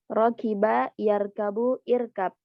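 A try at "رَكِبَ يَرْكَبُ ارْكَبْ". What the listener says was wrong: Ahsan. Lanjut.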